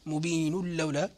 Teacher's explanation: فنقرأ بإدغام التنوين للسبعة من طريق الشاطبية